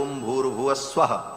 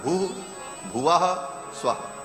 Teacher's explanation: तीनों को जब एक साथ उच्चारण किया जाता है तो ओम भूर्भुवः स्वः ऐसा हो जाता है। विसर्ग को र हो करके और फिर वो र ऊपर चला जाता है तो भूर्भुवः स्वः ऐसा उच्चारण होता है